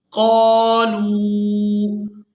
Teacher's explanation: قاف کو الف مدہ کی وجہ سے، لام کو واو مدہ کی وجہ سے کھینچ کر ادا کریں گے